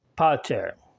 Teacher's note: the short a is a less distinct sound it's more like the first syllable in our word amaze